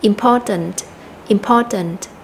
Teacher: tính từ important nó có ba âm tiết chúng ta sẽ nhấn mạnh vào âm thứ hai là âm Pa important important tiếp theo thì chúng ta nhấn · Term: trọng âm